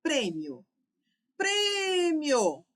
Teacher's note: A sílaba tônica está aqui, no prê. Minha palavra é uma paroxítona. · Minha palavra é uma paroxítona. E ela termina com ditongo crescente, ó. I, subir para o O.